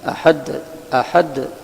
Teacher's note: Cuman qalqalahnya di sini qalqalah sughra, qalqalah yang kecil. Ahad langsung dimantulkan. · Qul huwallahu ahad. Dalnya itu dimatikan, kalau diwaqaf menjadi qalqalah.